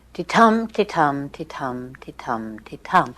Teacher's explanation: All it means is that there are 5 stressed beats in each line, and in each line, each beat is made up of 1 weak and 1 strong syllable. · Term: iambic pentameter